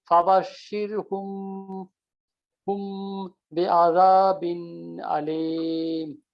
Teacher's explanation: এখানে ওদের মিমের পরে বা আছে, মিম জজম বা আছে, ওখানে গুন্না হবে।